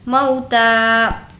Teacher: مو اس کو نہیں کھینچیں گے، یہ واولین ہے، موتا، تا کو کھینچ کر پڑھیں گے کیونکہ اس پر کھڑا زبر ہے۔